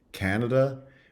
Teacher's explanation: Canada which has a full vowel in the first syllable